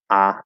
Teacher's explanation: I teach the merged cot merger, so there's just one sound instead of ah and all. It's just ah in the back.